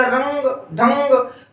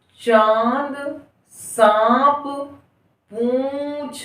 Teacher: जब हम चांद बोलते हैं तो मुंह और नासिका दोनों बाहर की तरफ आते हैं, श्वास बाहर निकलती है। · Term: चंद्र बिंदु